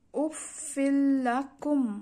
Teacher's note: তানভিনের পরে লাম তাই কুনহা ছাড়া মিলাতে হবে